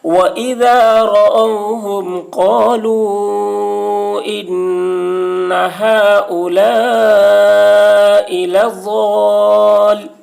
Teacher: وَإِذَا رَأَوْهُمْ قَالُوا إِنَّ هَؤُلَاءِ ضاد الف لام زبر ضال اوپر مد لضال. حرف مد کے بعد والے حرف یعنی لام پر تشدید ہے، اس لیے مد لازم ہوا. مد لازم کو 3 یا 4 الف کے برابر کھینچ کر پڑھیں گے. وَإِذَا رَأَوْهُمْ قَالُوا إِنَّ هَؤُلَاءِ لَضَالُّونَ لام واو پیش لو واو ساکن سے پہلے پیش ہے، واو مدہ ہوا، اس لیے واو مدہ کو ایک الف کے برابر کھینچ کر پڑھیں گے۔